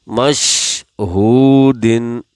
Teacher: واو کی وجہ ہا کو بھی کھینچیں گے 1 سیکنڈ کے برابر